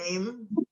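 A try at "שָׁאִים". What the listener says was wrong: That's a shin.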